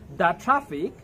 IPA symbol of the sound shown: da: